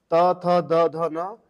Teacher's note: त थ द ध न ये ऊपरी दांत के हैं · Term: दंत वर्ण